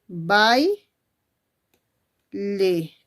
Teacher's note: se junta una vocal abierta que es a y después una vocal cerrada que es I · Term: diptongo